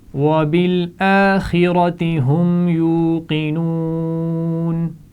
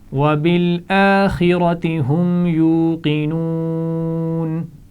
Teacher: خا اور را دونوں کو موٹا پڑھا جائے گا